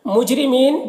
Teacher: مجرمین، جیم حروف قلقلہ میں سے، اور را کے نیچے زیر را کو باریک پڑھیں گے، اور یہاں پر وقف کی صورت میں مد عارض وقفی ہوگا، تو اس طرح سے پڑھیں گے۔